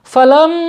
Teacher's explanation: Kemudian lanjut ya, falam ya, ingat ya, mim bertasydid. Ini wajib dibaca gunnah, ditekan dan ditahan 2 harokat ya. Falam, kemudian mimnya dibaca panjang ya.